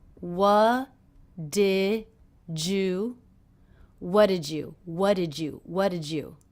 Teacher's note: the D and the Y here are combining to make the J sound